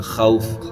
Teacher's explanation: واو لین ہے، جلدی آواز سے پڑھیں گے